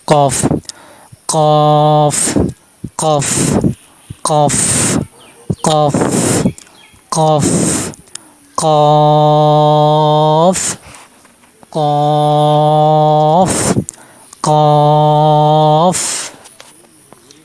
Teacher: জিহ্বার গোড়া তারপর উপরে তারুর সাথে লাগিয়ে উচ্চারণ করতে হবে। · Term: কফ হরফ